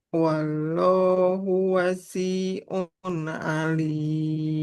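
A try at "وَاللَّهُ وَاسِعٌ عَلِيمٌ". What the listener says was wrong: Nah, di kata wasi'un yang panjang huruf waw bukan sinnya. Wallahu wasi'un. bukan sinnya. Wasi'un. Wallahu wasi'un alim. Sinnya nggak boleh panjang. Wasi'un. Wasi'un.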